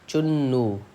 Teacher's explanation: چنو میں نون پہ تشدید ہے تو ہم نون کو 2 بار پڑھیں گے. ایک بار ہم چے سے ملائیں گے اور ایک بار ہم واؤ سے ملائیں گے.